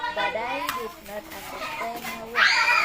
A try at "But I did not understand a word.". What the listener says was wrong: Jangan ditahan, understand. Ulangi lagi. But I did not understand.